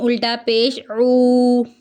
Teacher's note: عین کو حلق سے ادا کرنا ہے